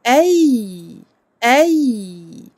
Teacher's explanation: Et on donne au ya son temps de rakhawa. Ne pas être trop brut, ne pas bloquer le ya quand il est sakin ou quand il porte une shadda. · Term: lin